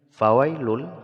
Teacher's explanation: maka haruf lam ini menjadi bertasdid dananwinnya tidak lagi dibaca langsung ketika dibaca fawailul langsung pada tasdid lam ya Jadi tidak boleh didengungkan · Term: idgham bila gunah